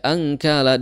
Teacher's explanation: di situ ada nun sukun ya bertemu dengan kaf maka dihukumi sebagai ikhfa